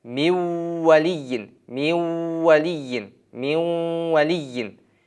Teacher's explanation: Nun tamg'asini vav tamg'asiga idg'om qilamiz, kirgizamiz. O'sha nun tamg'asi o'qilmay qoladi-da, vav tamg'asi tashdidli bo'lib, miv valiyin deb o'qiladi.